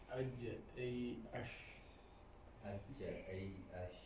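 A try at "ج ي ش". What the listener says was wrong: Your jim was too much to the front.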